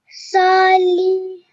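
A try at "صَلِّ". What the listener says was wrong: Okay, your voice just faded out at the end.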